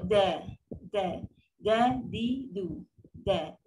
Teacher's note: Kalau dal, gigi kapak kita tu, belakang tu, kena kat situ belakang dekat di antara gusi dengan gigi lembut tu. So dia bunyi dia lembut, da, di, du, da.